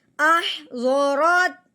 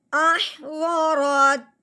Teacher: اپنی آواز اپنا لہجہ تھوڑا سا نیچے کی طرف لے کے آئیں گے، جس سے معلوم ہو جائے گا کہ بات یہاں پہ مکمل ہو گئی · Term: وقف